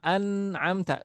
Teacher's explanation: makhrajnya Nun di ujung lidah nempel ke gusi